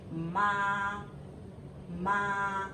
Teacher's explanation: it's flat high and flat